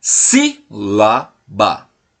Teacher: A sílaba tônica é a antepenúltima sílaba da palavra.